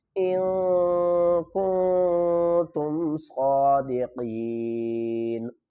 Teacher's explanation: نون ساکن اور تنوین کی آواز کو چھپانا ہے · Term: اخفا